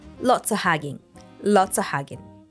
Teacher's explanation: off gets reduced to just o and the NG sound is is no longer nasal it loses · just o and the NG sound is is no longer nasal it loses the g at the end lots of hugging turns into lots of hugging lots of hugging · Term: connected speech